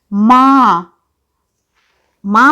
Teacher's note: बोलते समय स्वर मुंह और नाक दोनों से निकल रहा है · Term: अनुनासिक